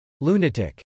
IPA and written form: lˈunət.ɪk (lunatic)